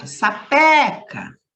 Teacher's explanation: a sílaba tônica é o pé